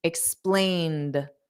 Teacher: e d is just pronounced as a soft D explained so the Ed does not add an extra syllable